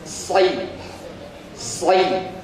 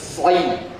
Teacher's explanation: ujung lidahnya tetap nempel di bawah, mirip sa, si, tapi pangkal lidahnya ngangkat